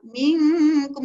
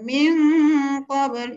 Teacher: Kalau jumpa kaf minkum jadi eng nipis pula. Ha, eng nipis satu, eng tebal satu, itu je lah bezanya